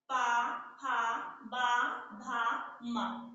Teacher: हमारे दोनों ओठ परस्पर आपस में मिल जा रहे हैं जब हम पा वर्ग का उच्चारण कर रहे हैं। ठीक है, इसलिए पा वर्ग का उच्चारण जो है वो ओष्ठ है।